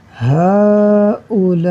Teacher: آگے دیکھیے، ہؤلاء، اب یہاں پر آپ دیکھ لیجئے کہ الف مدہ اور الف سے پہلے زبر ہے، الف مدہ کے بعد حمزہ اسی کلمے میں ہے، حمزہ اسی کلمے میں ہے، تو اب یہاں ہوگا مد متصل، اسی لیے سائن بھی مد متصل والا دیا ہوا ہے۔ تو ہم اسے 4 یا 5 حرکات کے برابر کھینچ کر پڑھیں گے